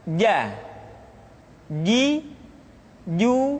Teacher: dikeluarkan dengan menyentuhkan tengah-tengah lidah dengan langit-langit